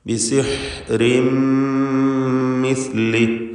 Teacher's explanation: ബിസിഹ്രിൻ എന്ന തൻവീൻ ശേഷമുള്ള മീമിൽ പൂർണ്ണമായും ലയിപ്പിച്ച് ഇദ്ഗാം ബിഗുന്ന കാമിൽ നൽകി മണിച്ചുകൊണ്ട് ഉച്ചരിക്കുക. ഷദ്ദുള്ള ഒറ്റ മീമ് മാത്രമാണ് പിന്നീട് ഉച്ചരിക്കപ്പെടുക.